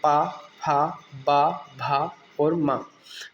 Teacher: इसके बाद अगला वर्ग है प वर्ग और इससे आप बहुत अच्छे से रिलेट कर पाएंगे। बिना दोनों होठों के संयोग के आप प वर्ग को के किसी भी अक्षर को नहीं बोल सकते। · दोनों होठों को आपस में आपको मिलाना ही पड़ेगा, तभी यह साउंड आपकी जो है मुंह से निकलेंगे, इसलिए इन्हें औष्ठ्य व्यंजन का नाम दिया गया।